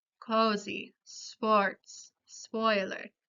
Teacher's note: Es un vocal posterior, media y redondeada. Los labios cambian para formar un óvalo o con la lengua al medio de la cavidad bucal.